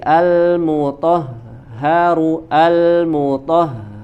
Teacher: sifat huruf H dia bisa mengalir suara ya karena tadi pita suaranya juga terbuka maka dia mengalir mutah Jadi tidak boleh ada jeda di situ ya tidak boleh